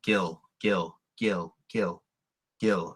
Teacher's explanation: you want to try to say kill without a breath of air and it will sound almost like Gill Gill Gill kill Gil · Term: unaspirated